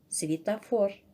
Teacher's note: Букв 8, звуков тоже 8. Ударение падает на третий слог.